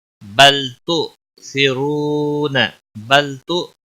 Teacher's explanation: حمزہ ساکن تھوڑا جھٹکے کے ساتھ ادا کریں گے، بل تو نہیں پڑھنا.